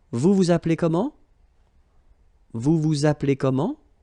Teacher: Remember, as usual, raise a little bit your voice at the end.